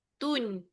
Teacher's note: Tun maknanya kita pergi ke makhraj nun. Nun lidah pergi ke langit kan. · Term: izharkan nun